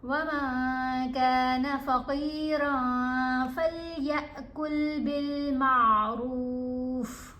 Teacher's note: जब भी आप देखें कि नून साकिन या नून तनवीन के बाद हरूफ इफ़ा में से कोई हरफ आ जाए, जो कि 15 हरूफ हैं, उनमें ता, सा, जीम, दाल, ज़ाल, ज़ा, सीन, शीन, स्वाद, द्वाद, त्वा, ज़ा, फ़ा, क़ाफ, कैफ शामिल हैं. तो आपने नून की आवाज़ को नाक में छुपा कर पढ़ना है. आपने नून को वाज़िया नहीं पढ़ना और एक अलिफ की मिकदार जितना ठहरना भी है.